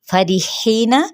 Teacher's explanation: फरिहीना, फा की ज़बर को लंबा नहीं करेंगे और रा बारीक पड़ा जाएगा। ही पे मद्दे बिल या का कायदा, एक अलिफ या दो हरकत के बराबर ही खींचेंगे, इससे ज़्यादा नहीं खींचेंगे।